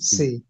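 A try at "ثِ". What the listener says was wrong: সি না তি, জিবার আগা ওই সামনের দাঁতের দাঁতের সাথে লাগে তি, থা, তি।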